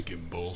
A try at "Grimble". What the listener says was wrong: He can't pronounce the R's.